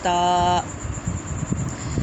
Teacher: زبان کی نوک جب اوپر کے دو دانتوں کی جڑ سے لگے، وہاں سے ادا ہوتا ہے تا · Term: حروف نطعیہ